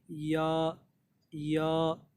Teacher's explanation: तो दोनों या जो है बिल्कुल जीन और शीन की तरह जो है ज़बान के बीच वाले हिस्से को उसी के ऊपर जो मुंह का हिस्सा है वहाँ पे टच कर देना है, वहाँ से या निकलेगी